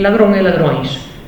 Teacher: El plural de irmão e irmãos, el plural de cão e cães, y el plural de ladrón e ladrões. Como ven, en el plural mantienen las diferencias y mantienen esas vocales nasales